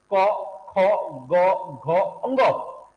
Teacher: क ख ग घ और अंग का उच्चार हम कहां से कर रहे हैं अभी कोमल तालू से कर रहे हैं · तो संस्कृत में तो हम इनका उच्चारण कंठ से करते थे, लेकिन हिंदी में हम अशुद्ध तद्भव रूप इसका प्रयोग करते हैं, तो हिंदी में हम इनका प्रयोग कहां से करा, कोमल तालु से। तो हम क, ख, ग, घ और अंगों का उच्चारण हम कहां से कर रहे हैं, कोमल तालु से कर रहे हैं।